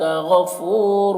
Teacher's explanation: غفور میں غین کو پر پڑھیں گے، یہ حروف مستعلیہ میں سے ہے۔ فو میں واو مدہ ہے، 1 الف کے برابر کھینچیں گے۔ رور میں دونوں را کو پر پڑھیں گے اور یہاں پر تنوین کے بعد را ہے حروف یربلون میں سے، تو تنوین کو را سے ملا کر بغیر غنہ کے پڑھیں گے، اس کو ادغام تام کہتے ہیں۔